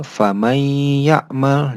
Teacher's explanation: Jadi nunnya tidak dibaca terlebih dahulu, jadi langsung ke huruf selanjutnya atau huruf ya. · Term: idgham